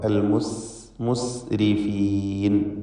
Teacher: റാഇന് കസ്റാണ് എന്നതുകൊണ്ട് തർക്കീഖ് നൽകി റാഇന് നേർപ്പിക്കണം. · സീന് മഹ്മൂസ് അക്ഷരമാണ്. കൂടാതെ സഫീർ എന്ന സിഫത്തും സീനിനുള്ളതാണ്. അൽ മുസ് എന്ന് പറയുമ്പോൾ ഉള്ള പ്രത്യേകമായ ശബ്ദമാണ് സഫീർ എന്നതുകൊണ്ട് ഉദ്ദേശിക്കുന്നത്.